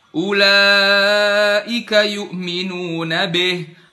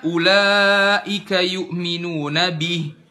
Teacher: kasrohnya jelas i, bukan dimiringkan jadi e